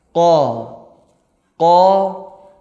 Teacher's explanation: pangkal lidah bertemu dengan langit-langit yang lunak yang tak bertulang nah disitu tempat apa namanya keluar huruf qaf kalau kita ucapkan